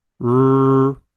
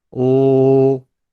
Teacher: For the r sound, the tip of the tongue is raised toward the alveolar ridge, but it doesn't touch it. For the ul sound, the tip of the tongue touches the alveolar ridge behind your upper front teeth.